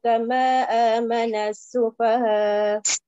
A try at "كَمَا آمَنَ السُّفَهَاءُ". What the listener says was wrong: Kama amana as-sufaha for haraka. Now read madda munfasil for.